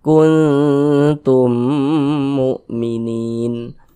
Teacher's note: Jadi bunyi nun sukunnya jangan dibaca kun berbunyi n sempurna n, kun, jangan, disamarkan bunyi nunnya.